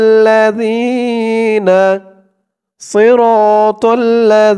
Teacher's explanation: জালের উচ্চারণটা একদম নরম পাতলা হবে জিহ্বার মাথা উপরের দাঁতের মাথার সাথে লাগবে